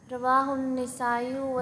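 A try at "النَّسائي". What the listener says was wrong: نسائی، نون کے فتح کے ساتھ، نسائی بھی ٹھیک ہے لیکن نون کے فتح کے ساتھ نسائی یہ زیادہ اچھا ہے۔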